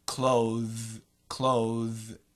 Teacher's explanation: the th is actually a vibrated th